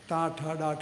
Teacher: നാക്കൊന്ന് വളച്ചു മുകളിൽ മുട്ടിച്ചാലോ ട എന്നാവും